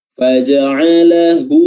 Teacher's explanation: hu diperhatikan dengan baik ya, dhammahnya, bibir dimonyongkan. Faja'alahu, dan 2 harokat saja ya.